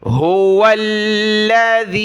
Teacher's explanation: ذال پر زبان نکالیں گے، ذال کو یا کے ساتھ ملایا، ذال یا زیر ذی، لام کو سخت کیا تشدید کی وجہ سے۔